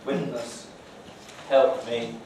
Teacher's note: fortis plosives here with accompanying glottalization